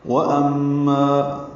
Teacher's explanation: واو ہونٹوں کی ناتمام گلائی سے ادا ہوگی اور جلدی پڑھیں گے.